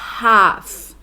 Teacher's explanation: Já na Received Pronunciation, esse A, ele é bem aberto, ele é bem A, o que a gente associaria com um acento agudo em português.